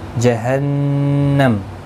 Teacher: نون مشدد پر گنہ ہوگا، میم ساکن پڑھا جائے گا. وقف کی صورت میں، ملانے کی صورت میں اپنی حرکت کے ساتھ پڑھا جائے گا.